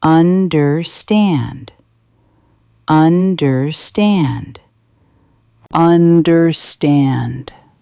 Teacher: Understand, understand. Where is the beat? It is at the end.